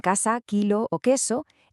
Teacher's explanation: Para el sonido K, como en casa, kilo o queso, escribimos hasta tres cosas distintas. Pero físicamente si lo grabáramos solo hay un sonido, el oclusivo K